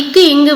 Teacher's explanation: இக்கு இங்கு வந்து நாவின் முதற் பகுதி, அன்னத்தின் அடி